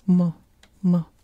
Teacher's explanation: So it starts with an O, but you barely, barely, barely pronounce it. It's stressed on the second word, so it's mo, mo.